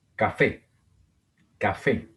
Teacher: Otra palabra aguda con el acento en la última sílaba terminada en vocal. En este caso una E.